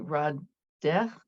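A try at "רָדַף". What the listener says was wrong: Radaf. And there's that final face of feet, Radaf.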